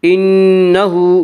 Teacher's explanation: انہ نون مشدد غنہ ہوگا، غنہ کی مقدار 1 الف ہے۔ انہ ہا کے اوپر الٹا پیش ہے، الٹا پیش قائم مقام ہے واو مدہ کے، اس لیے الٹا پیش کو 1 الف کے برابر کھینچ کر پڑھیں گے۔